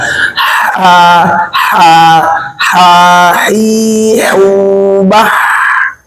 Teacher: ha dari tenggorokan ngalir dengan mudah